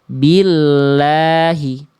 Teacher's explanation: Kalau misalnya ada lafaz Allah yang sebelumnya bunyi vokal i bi, maka enggak dibaca billahi, tapi dibaca tipis lamnya.